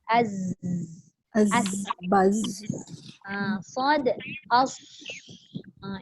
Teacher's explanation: Sofir itu berdesir. Bila kita sebut huruf dia ada bunyi desiran.